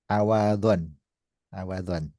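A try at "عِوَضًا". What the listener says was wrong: Bacanya awadan atau iwadon. Nah, ini butuh kamus ya. Nah, di kamus iwadun. Berarti ainnya kasrah.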